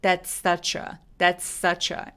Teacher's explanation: S가 서로 겹치기 때문에 한 번만 발음해서 that's such a 이렇게 발음해 주시면 돼요.